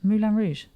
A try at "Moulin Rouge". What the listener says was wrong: It's Moulin Rouge. Moulin Rouge. You're saying Moulin as in the Disney film It's Moulin Rouge.